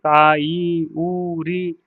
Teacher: इसके बाद दीर्घ स्वर दीर्घ स्वर में जिसको बोलने में ज्यादा टाइम लगता है। उच्चारण काल के लिए ज्यादा टाइम लगे दो गुना टाइम लगे उसको दीर्घ स्वर कहते हैं।